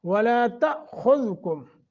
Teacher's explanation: تا حمزہ ساکن ہے، جھٹکا دے کے پڑھیں گے